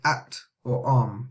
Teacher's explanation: it's actually a Hamza and that comes from the bottom of the throat yeah it's the same as English yeah just like act or